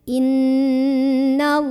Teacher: Inna, ada gunnah musyaddadah karena ada nun yang bertasydid. Cara membacanya didengungkan dulu, ditahan kurang lebih 2 harokat. Jadi bunyi an-nya ditahan. Innallah. Ada lam jalalah dibaca secara tafkhim karena huruf sebelumnya yang nun berbaris di atas.